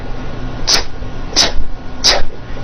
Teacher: It's unvoiced. Your vocal cords are not vibrating. T, t. Now don't change a thing with your mouth.